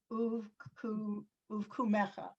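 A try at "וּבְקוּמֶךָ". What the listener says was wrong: Very nice. Thank you.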